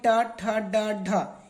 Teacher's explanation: ट वर्ग में ट ठ ड ढ इनको मूर्धा से प्रयोग करते हैं दोस्तों। मूर्धा का मतलब होता है कि जो मुंह का जो ऊपरी वाला छत होता है दोस्तों, वहां से इसका हम लोग प्रयोग करते हैं, मूर्धना।